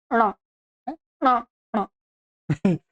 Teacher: इसमें मूर्धा के साथ में नासिका मिला देंगे · ऋ ट ठ ट ठ ड ढ ण इसमें मूर्धा भी रहेगा और साथ में क्या है ये नासिका भी रहेगा ठीक है पांचवा वर्ण है इसलिए इसमें क्या रहेगा मूर्धा रहेगा अपना इसका स्थान मूर्धा है और सहयोगी स्थान क्या है नासिका मूर्धा और नासिका के सहयोग से इसका उच्चारण होता है